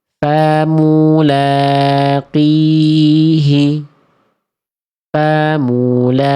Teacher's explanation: Dia qafnya tidak berubah jadi kaf dan qafnya tidak terlalu tebal.